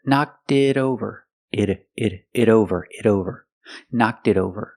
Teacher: the T in it is a fast D because it's between vowels